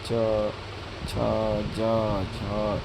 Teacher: अग्रभाग कठोर तालु को स्पर्श करता है, तालव्य व्यंजन कहलाते हैं